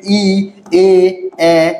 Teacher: এইগুলো উচ্চারণের সময় দেখবেন জিহ্বা কোথায়? জিহ্বা কোথায় রয়েছে? জিহ্বা সামনের দিকে এগিয়ে আসছে।